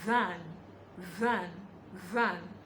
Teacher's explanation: It's quite different from the consonant t. Then for the voiced th, you would feel vibration by the side of your neck